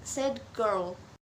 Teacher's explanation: when a D sound occurs before a G sound, it is usually converted into the G sound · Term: assimilation